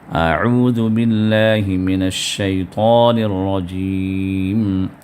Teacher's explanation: من الشیطان میں طا کو پر کرنا ہے، طا کو موٹا کر کے ادا کرنا ہے